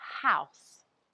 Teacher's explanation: when a word starts with an H such as the word house you can hear the sound H but it's a soft introduction to that sound house it's not a hard where you can hear the vibration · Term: H sound